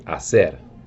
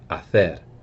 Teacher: In Latin America, they say hacer. But Castilian Spanish, which is spoken over in Spain, they say hacer. They have a lisp.